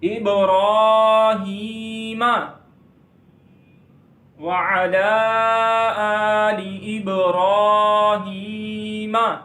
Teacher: را کو لمبا کریں گے، را کو موٹا پڑھیں گے اور ہا کو لمبا کریں گے